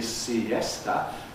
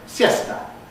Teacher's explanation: So, in Spanish, there's a word Well, you can think of it as basically siesta, but because the Spanish rule obligatorily compresses here, you get siesta. That's the actual pronunciation, and it actually has two syllables. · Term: compression rule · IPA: [siˈesta]